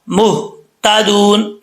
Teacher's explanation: इस हा का ताल्लुक सीने की तरफ है तो भारी आवाज के साथ इसका साउंड निकलेगा